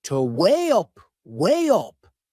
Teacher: We insert a little Y sound. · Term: linking sound